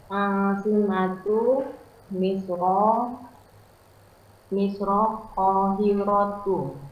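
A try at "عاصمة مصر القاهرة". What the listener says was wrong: Nah, Asimatu Misra Al-Qahiratu. Pakai alif lam ya, Al-Qahiratu. Nah, Asimatu Misra Al-Qahiratu. Pakai alif lam ya, Al-Qahiratu. Ya, Misra. Dia Misra ini karena maunu minas.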